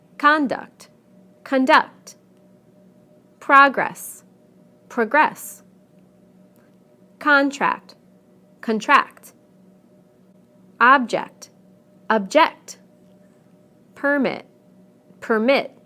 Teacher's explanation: we stress the first syllable in the nouns and the second syllable in the verbs